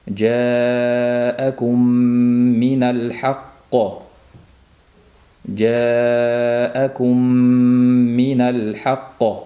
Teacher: kumdagi mimni bir muddat ushlab turiladi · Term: idg'om mislayn, G'unnali idg'om mislayn